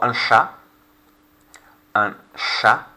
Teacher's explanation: Notice the C and the H is a sh sound as opposed to ch, like in English.